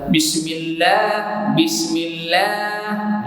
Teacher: pada kalimah Allah tak dibaca dengan cepat, tapi dibaca panjang, 2 harakat, ada mat walaupun tak ditulis alif kecil. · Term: lam tu panjang